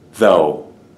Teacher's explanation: this is a voiced th sound and then the rest of this is just oh